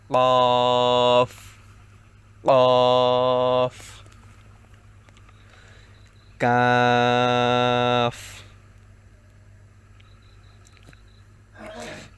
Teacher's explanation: কফ এর উচ্চারণটা হচ্ছে জিহ্বার গোড়া তার বরাবর উপরে তালুর সঙ্গে লাগিয়ে